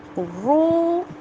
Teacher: ملائکۃ والروح، ور، را کے اوپر شد ہے، 2 دفعہ آواز آئے گی اور آگے آپ دیکھیں یہ واؤ مد ہے، رو، اس کو کھینچ کر ادا کریں گے کیونکہ جزم والی واؤ سے پچھلے حرف کے اوپر پیش آ گئی ہے